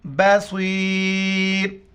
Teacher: موٹے الفاظ میں سے موٹا کر کے پڑھیں گے، بصیرن، کیونکہ یہاں پر آیات ختم ہو رہا ہے تو یہ آخر کے جو 2 پیش ہیں وہ پڑھی نہیں جاتے ہیں